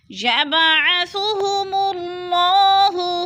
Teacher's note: یبعث، یب با ساکن ہے اور حروف قلقلہ میں سے ہے۔ قلقلہ کا معنی ہوتا ہے کہ لفظ کو ہلا کر پڑھنا، یعنی جنبش دینا، تو ہم نے با کو ہلا کر پڑھنا ہے · اللہ سے پہلے لفظ میم کے اوپر پیش ہے تو اللہ کو ہم پر کر کے پڑھیں گے